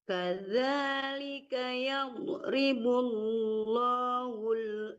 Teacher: bukan hu aja tapi hul ada lam mati di depannya